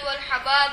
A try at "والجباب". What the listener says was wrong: حباب نہیں ہے گا اے فعال کے وزن پر جمع ہے اے جیم جباب جب مٹکا ان دی جمع ہے والجباب